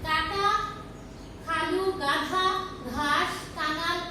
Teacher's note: যেসব ধ্বনি উচ্চারণের সময় জিভের পিছনের অংশ উঁচু হয়ে আল জিহ্বার কাছাকাছি নরম তালুর কাছে বায়ুপথে বাধা সৃষ্টি করে সেগুলোকে কণ্ঠ ব্যঞ্জন বলে